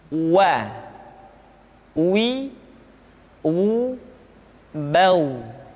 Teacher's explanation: huruf wa diucapkan dengan cara memonyongkan dua bibir kita